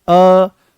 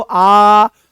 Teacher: अर्ध विवृत्त का मतलब यह है कि मुख यहां पर आधा खुलेगा।